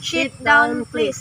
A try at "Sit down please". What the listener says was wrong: Bukan shit. Kalau shit itu lain artinya sit. Sit biasa aja. S-I-T. Sit.